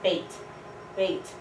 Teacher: starts mid and it blends up